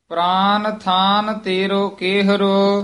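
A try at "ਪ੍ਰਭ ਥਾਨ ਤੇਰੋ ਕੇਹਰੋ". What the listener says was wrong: प्राण नहीं है, प्राभ है पद,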